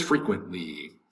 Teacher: The accent's over the first syllable, frequent. The T kind of disappears